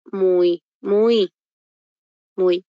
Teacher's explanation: en este caso el y está sonando como I se produce un diptongo